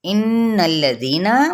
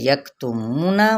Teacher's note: غنہ کرتے ہوئے زی پہ مد اصلی بالیا، اور یکتمون مد اصلی بالواو